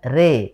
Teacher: harakat fathah yang dimiringkan ke kasrah. Jadi bunyi fathah yang dimiringkan ke kasrah. Sehingga kalau fathah itu ro, kalau kasrah itu ri, nah ini miring tengah-tengah sehingga dibaca dengan re. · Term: imalah